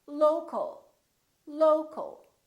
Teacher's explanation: we stress the first syllable here · We reduce the second syllable and it becomes the local, local. So you see OL and AL sound exactly the same because they're both reduced syllables.